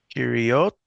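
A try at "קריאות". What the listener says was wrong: One more time, and let's pronounce the aleph. Aleph has a distinct sound. And the O sound is always on the top. It's not O, but Ah. And the Aleph has its own consonant sound.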